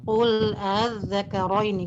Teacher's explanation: Hamzahnya jangan dua harokat ya. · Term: tashil